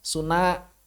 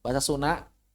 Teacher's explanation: Tulisannya Sunda dibaca Suna. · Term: perubahan suara